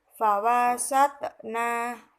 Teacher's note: Ayat yang kelima, fawasatna terdapat hukum bacaan qalqalah sughra karena ada huruf qalqalah yaitu ta yang terletak di tengah ayat atau tengah kalimat, sehingga cara membacanya harus dipantulkan secara tipis